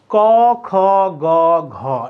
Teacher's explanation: এই কণ্ঠের সাহায্য লাগে এজন্য এদের নাম কণ্ঠ বর্ণ